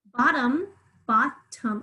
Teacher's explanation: I hear that short O sound in the first syllable, but in the second syllable, schwa